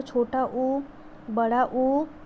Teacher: जब हम बोलते हैं तो होठ हमारे थोड़े से सर्कुलर शेप में या गोल हो जाते हैं बोलते टाइम, तो उस वृत्ताकार में आ जाते हैं, तो उसमें हमारे वृत्तमुखी आ जाएंगे।